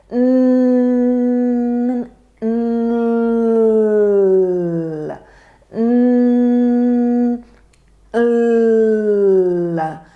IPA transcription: l